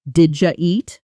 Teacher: The D and Y sounds blend into a J sound.